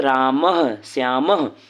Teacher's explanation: विसर्ग का उच्चारण आधे ह, जैसे इसको ह के नीचे हलंत लगा दिया तो ये आधा ह हो गया, से किया जाता है।